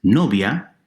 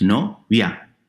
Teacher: Likewise, novia, girlfriend or bride, 2 syllables, no-via. I and a combine into a single sound. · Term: diptongo